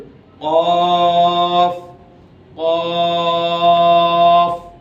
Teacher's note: জিহ্বার গোড়া তার বরাবর উপরে তালুর সাথে লাগিয়ে অফ। জিহ্বার গোড়ার অংশটা ঠিক বরাবর গিয়ে তালুর সাথে লাগবে